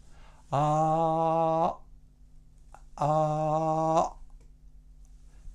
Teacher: And you can do this by first saying the vowel ah, and while producing the ah sound, you stop the sound by closing off your throat